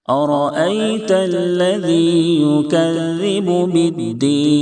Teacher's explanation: را کے اوپر زبر ہے، اس لیے را کو پر کریں گے، یعنی موٹا کر کے ادا کریں گے. أرأيت الذي، دونوں جگہ حمزہ کو تحقیق سے ادا کریں گے.